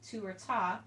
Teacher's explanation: So the articulations that we tend to use as modern wind players are the T, the tu or the ta, we say tu or ta, and we strike that alveolar ridge, which is the skin behind the teeth before that sharp dip